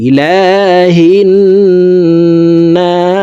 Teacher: ইলা লামের উপরে খাড়া জবর আছে, তাই উপরের দিকে ধাবিত করে লাম হরফকে এক আলিফ টেনেই পড়ব।